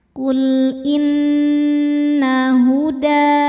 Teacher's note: Huruf nun hukumnya gunnah musyaddadah karena nunnya bertasydid. Cara bacanya dengung, tahan dengungannya kurang lebih 2 harokat.